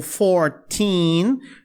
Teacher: A sílaba tônica é mais o teen